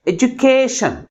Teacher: last నుంచి second syllable కే అనే syllable ఎక్కువ ఫోర్స్గా పలుకుతుంది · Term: ప్రైమరీ స్ట్రెస్